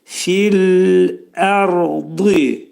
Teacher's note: Ərd dedikdə sükunlu radan qabaq ə gəlir. Ona görə ra hərfi qalın oxunacaq. Ra hərfinin məxrəci dilimiz yuxarı üst işin altında ətə dəyir.